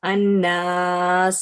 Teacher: صفیر کی جو کوالٹی ہے یہ سیٹی کی طرح آواز آتی ہے اس میں